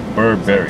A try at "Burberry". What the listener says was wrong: It's Burberry, not Burberry. You said like blueberry.